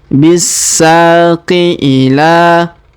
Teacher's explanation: Huruf la kita panjangkan 2 harokat karena alif kecil di atasnya dan alif bengkok atau alif maksurah di depannya.